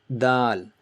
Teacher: And you know where dal touches, tip of your tongue touches the bottom of your upper jaw and gum